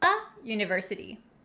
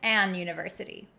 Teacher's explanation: the U in University doesn't sound like a vowel it has the y y sound